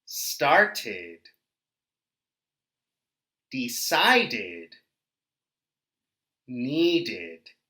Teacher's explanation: id group it appears in words like started decided and needed repeat after me so you can hear the id sound at the end of these words · when the final sound not letter is a t or a d sound then in the past simple we say id